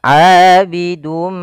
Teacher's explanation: kita masukkan tanwinnya kepada huruf mim kemudian ditahan